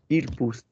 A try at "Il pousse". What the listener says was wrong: 2 words. I want one. Il pousse. Think of the sliding, please. Think of the motorbike going around the corner. Ew. Don't think TP or IP. Think ew. Il pousse.